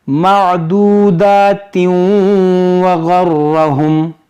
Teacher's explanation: پھر ادغام ہوگا یہاں پر کیونکہ تنوین کے بعد واو ہے